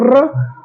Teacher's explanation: य र बोलते हो तो र, जैसे टा बोलते थे तो जीभ ऊपर लड़ रही थी, लेकिन इसमें र बोलने में नहीं हो रही, र बोलने में पूरा टच नहीं हो रहा, हल्का सा इंगेज है, तो ये आधा टच होता है, इसलिए कभी कभी इसे अर्ध स्वर भी कहा जाता है, ठीक है। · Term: अंतस्थ